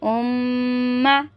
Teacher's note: मीम मुशद्दद का गुन्ना कर रहे हैं हम